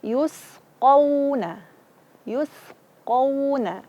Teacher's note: Jangan sampai memanjangkan juga qauna, tidak. Tapi di sini tidak ada gunnah, dia hanya waw mati atau waw sukun.